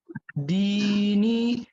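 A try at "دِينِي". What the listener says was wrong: नी को भी खींचना है, नून याजर नहीं है ना, या साकिन से पहले जेर।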